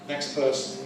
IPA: ˌneks ˈpɜːsn̩